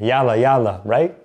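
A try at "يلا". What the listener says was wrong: No, stress the L sound a little bit. Yalla, yalla.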